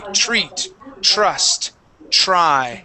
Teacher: whenever you see a TR sound or a TR, usually at the beginning of the word, okay, you can pronounce that TR like a CHR. So notice how I don't say treat, treat.